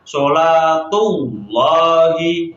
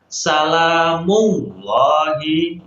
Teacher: jadi lamnya itu ditebalkan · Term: lam tafkhim